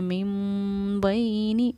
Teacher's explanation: ٹھہراؤ بھی کیا اور ہماری آواز ناک میں بھی گئی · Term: غنہ